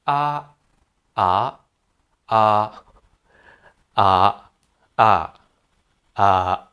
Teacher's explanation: They have three flat tones at the different pitches.